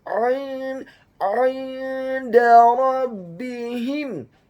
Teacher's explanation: kata rabbihim, huruf ra-nya dibaca tafkhim tebal fathah 1 harokat, huruf ba-nya dibaca tipis tarqiq ditasydidkan ditekankan kasrah 1 harokat, huruf ha-nya dibaca tafkhim tebal kasrah 1 harokat, huruf mim yang sukun bertemu dengan huruf jim yang fathah.